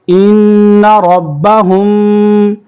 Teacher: وقف کریں گے تو وقف کی صورت میں یہ سیم ہے۔ ان ربہم، ان پہ بھی غنہ کریں گے اور ہم پہ بھی غنہ ہوگا